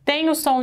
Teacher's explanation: Tem o som de U, tem o som de I, eles são fracos, enxaguei. O mais forte é o do meio, que tem som de E. Então, aqui eu tenho semivogal, vogal e semivogal. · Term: tritongo